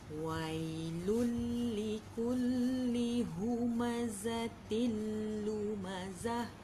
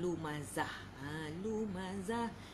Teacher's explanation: Humazatil adalah idgham bila ghunnah sekali lagi. Tanwin bawah berjumpa dengan huruf lam.